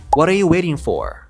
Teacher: akhir bunyinya akan menjadi for contohnya What are you waiting for karena dia berada di akhir jadi penekanannya itu lebih ke kata for